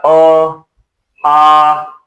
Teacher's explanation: इसका उच्चारण स्थान होगा कंठ। इसे कहा जाता है कंठ्य स्वर। ये कंठ से बोला जाता है आ, कंठ स्वर।